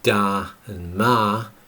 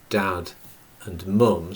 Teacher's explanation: the elongated vowel sounds and the elision of the consonant phonemes at the ends of those words are something that you could argue is distinctively Liverpudlian